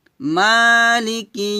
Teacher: সাথে পড়েন আর রাহমানির রাহিম যিনি দয়াময় পরম দয়ালু তারপর মালিক মা টান দিবেন মালিক হবে না